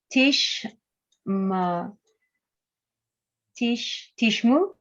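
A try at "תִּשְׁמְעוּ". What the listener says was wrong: Let me hear a sound here with the mem. It's its own vowel. It's like half a vowel. a little sound, but it's not no sound in this case.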